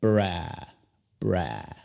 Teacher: La A no es cortada como en español, o sea, como A. Es más larga, es enfatizada.